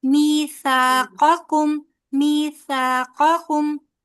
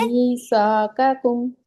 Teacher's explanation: قاف کو موٹا کرنا ہے. ادھر بھی باریک لفظ ہے آگے بھی باریک ہے بیچ میں موٹا ورڈ ہے.